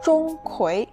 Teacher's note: the first syllable, Zhong, is flat, like a high steady note